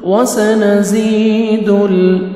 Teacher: دال کو لام کے ساتھ ملانا ہے اور لام کو آپ نے ہلانا نہیں ہے